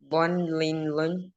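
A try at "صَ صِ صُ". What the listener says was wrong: ഇവിടുത്തെ ലെറ്റർ നമ്മള് മുന്നേ പഠിച്ചത് ലോ എന്നല്ല, ഇത് ആക്ച്വലി സോ എന്നാണ് മോനെ. എന്ന് പറഞ്ഞ ഇങ്ങനെ സൗണ്ട് കേട്ടോ. ഹെവി ലെറ്റർ ആണ്. അപ്പൊ ഹെവി ആണ്. സ്വൻ സിൻ സുൻ ഇങ്ങനെ പറഞ്ഞ.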